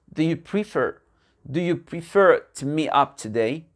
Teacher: le to devient te. L'accent tonique se fait sur la deuxième partie du mot.